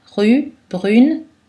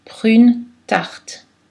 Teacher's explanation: la consonne liquide L et R a tendance à devenir non voisée. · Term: dévoisés